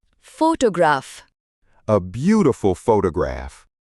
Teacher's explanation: इसमें स्ट्रेस यानी जोर पहले सिलेबल पर है। फोटोग्राफ। हम फोटोग्राफ नहीं कहते, जोर शुरू में है।